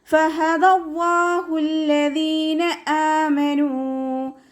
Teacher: ഫ മേലെ മുൻപല്ലിൻ്റെ അറ്റം താഴെ ചുണ്ടിൻ്റെ ഉൾവശത്ത് നനഞ്ഞ ഭാഗത്ത് വെക്കുക.